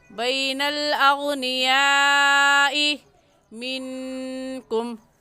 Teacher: इस मद को 4 अलिफ की मिक़दार खींचेंगे, इससे कम या ज़्यादा नहीं खींचेंगे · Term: मद्दे मुत्तसिल